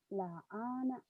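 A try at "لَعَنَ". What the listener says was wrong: Nggak ada yang panjang. La'ana. La'ana.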